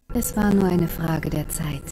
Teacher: What is the vowel sound at the end of Frage? If you guessed a schwa, you're right.